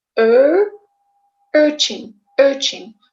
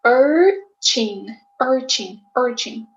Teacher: you would insert the r sound in the middle